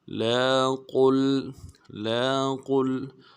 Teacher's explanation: قاف کو موٹا کریں گے اور آگے لام کے ساتھ ملائیں گے